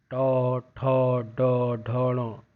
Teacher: तो ये आप देखोगे मूर्धा आपके ऊपर वाला हिस्सा जो है वहाँ पे जीभ छूती है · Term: ट वर्ग